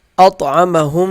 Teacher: اطعمهم، طا پہ قلقلہ کیا جائے گا